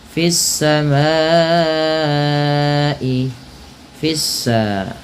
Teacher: diidghamkan kepada huruf setelahnya, yaitu huruf sin, sehingga sinnya berharakat tasdid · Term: alif lam syamsiyah